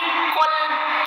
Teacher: Kul, bukan kul, tapi kul, karena dia pangkal lidah sedikit dibelakangkan. Jadi kul, bukan kul. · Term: huruf qaf